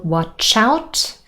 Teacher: there is linking from consonant to vowel sound, and out really sounds like chout